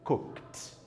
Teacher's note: As suas cordas vocais não vibram. Portanto, você vai pronunciar o ed com o som de T